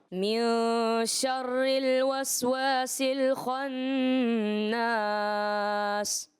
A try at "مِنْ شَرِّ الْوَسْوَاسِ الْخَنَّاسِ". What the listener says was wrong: وہی تھوڑی غلطی ہوئی را والی، کہ اصل میں کیا ہوتا ہے کہ یہ پریکٹس نہیں ہوئی ہوتی. تو جس کی وجہ سے وہ ذہن پہ فوراً آتا ہے من شر نہیں، من شر الوسواس الخناس. تو آپ نے کوشش کرنا ہے اس کو باریک.